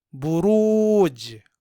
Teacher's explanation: पेश ब रा पेश वाव सुकून रू बरू जीम सुकून बुरूज यहां हर्फ जीम में कलकल होगा क्योंकि जीम हर्फ मु कलकल है और यहां यह साकिन है